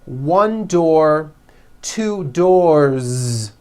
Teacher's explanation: with a voiced Z ending